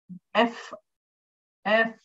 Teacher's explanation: These are nothing but, these sounds, F. When you say that F, the lower lip is going behind the upper teeth. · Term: fricatives